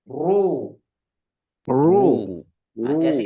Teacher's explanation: harus bergetar lidahnya tapi getarnya enggak terlalu banyak juga ya